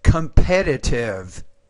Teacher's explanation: the stress is on that second syllable